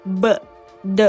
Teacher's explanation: เส้นเสียงทั้ง2เส้นเนี่ยจะเคลื่อนมาติดกันนะคะแต่ว่าไม่ได้สนิทเนาะ มันก็จะคล้ายๆกับประตูที่เป็นบานสวิงที่มันปิดปิดไว้อ่ะแต่ว่าลมเนี่ยมันก็ไม่ได้ผ่านได้สะดวกหรอกทำให้กระแสลมที่มีจำนวนมากเนี่ยมันเลยต้องผลักให้เส้นเสียงเมันแยกออกจากกันจึงเกิดเป็นลักษณะนะคะที่เรียกว่าเส้นเสียงสั่นเกิดเป็นเสียงที่เราเรียกอีกอย่างนึงว่าเสียงก้องหรือเสียงโฆสะนั่นเองหรือภาษาอังกฤษเราก็เรียกว่าvoicesoundนั่นเองนะคะเช่นเสียงเบอะเดอะ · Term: เส้นเสียงปิดเปิด